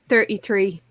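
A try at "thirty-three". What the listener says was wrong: Now, you did say 33, but earlier you said 3 when you were talking very fast.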